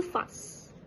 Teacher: the elision occurred in the word fast, where the t sound was omitted